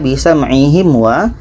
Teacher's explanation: Maka bisa ma'ihim wa, mim mati bertemu i tidak dengung, mim mati bertemu wa tidak dengung